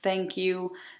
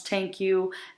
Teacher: the other difficulty that they have is the voiceless inter dental fricative